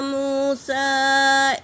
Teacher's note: اور موسیٰ میں واو ساکن سے پہلے پیش واو مدہ ایک الف کے مقدار کھینچیں گے، اور سین پر مد ہے، مد منفصل، اسے 3 سے 4 الف کی مقدار کھینچیں گے، اور لام پر کھڑا زبر ہے تو ادا کریں گے، ایک الف کے مقدار کھینچیں گے۔